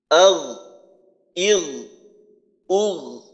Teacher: এইখানে আগ আওয়াজ বন্ধ হবে না, আবার আগ এইভাবে কলকলাও হবে না। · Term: গইন